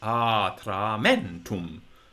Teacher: words like atramentum, where the accent is on a short vowel and the other vowels are long and unaccent.